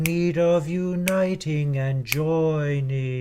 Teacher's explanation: act of need the same thing happens in measure 29 and the last time you sing kneading you lose the last syllable altogether and just go into of uniting